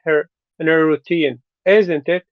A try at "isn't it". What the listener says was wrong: Oh, don't not a question. Isn't it? Isn't it? Make it yeah, make it a statement. that way you sound confident. If you say isn't it, you sound like you're not sure. that's that's not very confident if you say isn't it. You want to say isn't it. Do the opposite, like Pachu said.